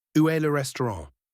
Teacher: The final t is silent and ran uses a nasal sound